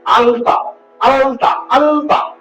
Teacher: ত এর যে উচ্চারণ স্থান দন্ত স্বাভাবিকভাবে ল এর উচ্চারণ স্থানটিও হচ্ছে দ তাহলে যখন দন্ত ধবনি সংস্পর্শে আসছে তখন সে দন্ত হয়ে যাচ্ছে।